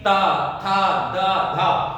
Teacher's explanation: त वर्ग की आप बात करेंगे तो आपकी जीवा ऊपर वाले दंत पंक्तियों को स्पर्श करेगी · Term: दंत वर्ण